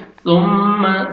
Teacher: سا کو نرمی سے ادا کرنا ہے تاکہ سین میں ساؤنڈ نہیں جانا چاہیے. ثم سامنے والے دو دانت ہیں ان کے نیچے زبان کو لگائیں گے تو سا ادا ہوئے گا.